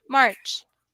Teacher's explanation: One thing is that you're saying marsh and not march, and that's a different word in English. So it's a CH sound.